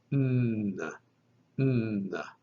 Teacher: The dental nasal is the letter ni, sounding like the English N. And this sound is voiced.